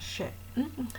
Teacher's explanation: la S se palataliza y resulta una S palatal, una fricativa prepalatal sorda